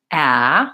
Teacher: So yes, when we did talk about vowel a in the American Sounds Challenge, and that's a front vowel with an open mouth and the tongue at the bottom